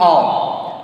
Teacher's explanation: these 2 letters these 2 letters are forming nasal vowel sound on